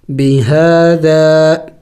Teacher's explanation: ہا کے اوپر کڑی زبر ہے ایک الف کے مقدار کھینچیں گے